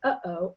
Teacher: you can feel your larynx or your Adam's apple do a little jump and that's the air coming up and stopping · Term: glottal stop